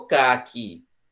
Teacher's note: E a fruta, caqui, tem o acento tônico onde? Na última sílaba.